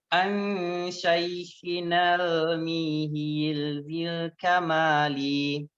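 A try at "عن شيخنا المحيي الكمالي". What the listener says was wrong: Jadi mihi ianya tasdid dan kasroh. Mihiyyidil kamali. mihiyyi. An syaikhinal mihiyyidil kamali.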